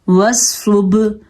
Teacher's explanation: سواد حروف مستعلیہ میں سے ہے, پر پڑھنا ہے, اور با حروف کلکلہ میں سے ہے, یہاں پہ کلکلہ کرنا ہے, اور ہا جو ہے اس کی مخرج کا دھیان رکھنا ہے.